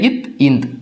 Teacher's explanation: நாக்கினுடைய நுனிப்பகுதி, மேல்வாய் பல்லினுடைய அடிப்பகுதி